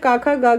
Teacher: ये कंठ से बोले जाते हैं। किससे बोले जाते हैं? कंठ से। कंठ मतलब गले से। ठीक है, तो ये कितने हैं? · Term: कंठ व्यंजन